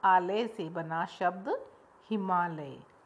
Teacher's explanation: अ और आ के बाद हिमालय में क्या परिवर्तन आया कि दोनों ही स्वरों की जगह एक दीर्घ आ गया। दीर्घ आ की ध्वनि आ गई।